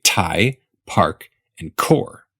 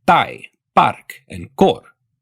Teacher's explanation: when you say the letters P T and K you make a big puff of air after the beginning of those consonants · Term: aspiration